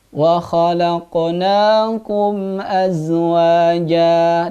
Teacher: Jadi kalau ada mim sukun bertemu dengan hamzah dalam Al-Quran, maka bacaannya harus jelas. Tapi jelasnya di bibir, bukan halqi. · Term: idhar syafawi